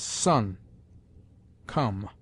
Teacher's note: The short o has sometimes the sound of close u, as son, come.